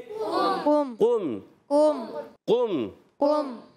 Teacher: काफ पर पेश है होंठ गोल होंगे · काफ अदा होता है ज़बान की जड़ और तालु के नर्म हिस्से से